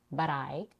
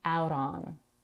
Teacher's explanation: She pronounces a flap T at the end of but before I